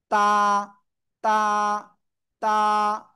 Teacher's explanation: জিহ্বার আগা, সামনের উপরের 2 দাঁতের গোড়ায় লাগান লাগান লাগান, লাগিয়ে জাস্ট একালিপ টেনে পড়তে হবে।